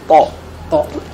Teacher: Lidah di huruf to itu makrotnya adalah di ujung lidah ketemu dengan pangkal 2 gigi seri atas.